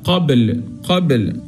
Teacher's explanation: فهذه الحروف كلها بنعمل لها قلقله